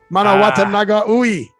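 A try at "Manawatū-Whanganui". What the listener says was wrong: Not ooey.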